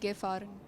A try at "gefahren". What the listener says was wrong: So, gefahren. I heard gefahrt. So, you have to say the endings clearly, otherwise it's a mistake.